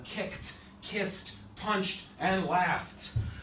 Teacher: But the sound of the ED is not ED, it's T. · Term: T sound